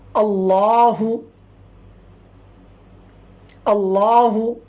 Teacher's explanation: لفظ اللہ سے پہلے اگر زبر ہو یا پیش ہو تو وہ لام لفظ اللہ پر پڑھا جاتا ہے یعنی موٹا